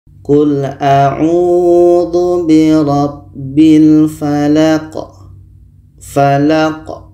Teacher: La ini pendek dan qa ini dimatikan. Qa mati hukumnya adalah qalqalah. Qalqalah kubra, ada pantulan.